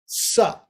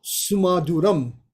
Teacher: And then sa is very dental